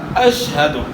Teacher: شین کو آپ نے پست آواز کے ساتھ ادا کرنا ہے، جس طرح سین جو ہے نا، سین کے مقابلے میں شین پست آواز کے ساتھ ہے۔